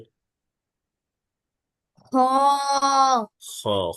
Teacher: খ উচ্চারণ করতে হবে কণ্ঠনালী শেষ ভাগ থেকে